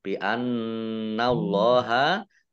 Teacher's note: nunnya ada tasdidnya, dibaca mendengung, ditahan 2 harokat